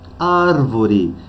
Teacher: a antepenúltima sílaba é a mais forte é a sílaba tônica é a antepenúltima é a tônica é uma palavra proparoxítona e